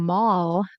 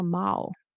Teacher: they don't pronounce the L all the time at the end